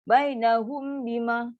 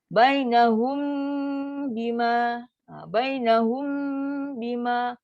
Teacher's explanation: Sedangkan mim pun ada sifat dengung. Bila jumpa dengan ba, kena dengung. So dengung pun dengung yang sempurna.